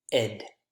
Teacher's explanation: we add a syllable by using the schwa and D vowel and consonant sound. If a word ends in T or D consonant sound, like these in group 1, then this is how we pronounce ED.